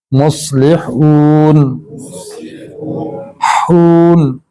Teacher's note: سے مختلف ہوگی، سین کی آواز باریک ہوتی ہے سیٹی والی، صاد میں بھی سیٹی ہوتی ہے، یہ حروف صفیریہ میں سے ہے، لیکن یہ ذرا آواز موٹی ہوتی ہے، زبان تھکتی ہے اس کو پڑھتے ہوئے